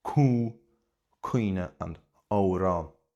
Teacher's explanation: Because of the M, it can be pronounced very heavily nasally as cú. So, you get cú cuinne and amhrán.